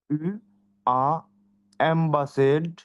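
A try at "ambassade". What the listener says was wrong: এমবাসাদ না, এম কি হবে? তাহলে কি হবে? লম্বাসাদ। লম্বাসাদ, না জেড কেন? ডাবল এস এ না, ডাবল এস স হয়, তাহলে স, স প্লাস আ, তাহলে কি হবে? সা হবে না? সকারে সা, ডি থেকে দ আসে, তাহলে কি হবে? সাদ, রাইট? সাদ, অম্বাসাদ, লম্বাসাদ, ওকে।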